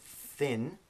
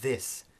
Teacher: So that difference in phonetics is called voiced and voiceless. So the thin is voiceless, and the th in this is called voiced.